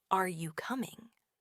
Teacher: your voice will often have a rising intonation, almost as if you're asking for confirmation.